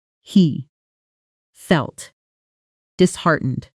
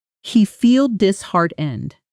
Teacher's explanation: He feel disheartened, almost like one long word, because the T at the end of felt softens and connects directly into disheartened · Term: natural connected version